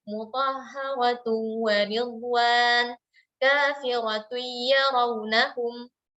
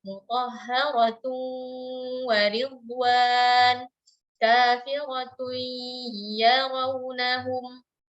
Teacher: hukumnya idgham masuk dan disertai dengan gunnah yang dipanjangkan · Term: gunnah mutawwalanya